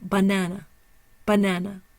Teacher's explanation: The primary stress is on the NA. There's no secondary stress, and the schwa is over the first syllable and over the last.